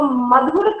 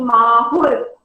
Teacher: मधुर का म जो कि ह्रस्व है वह बोलियों में जाकर दीर्घ हो गया, यानी माहुर, माँ आ दीर्घ हो गया।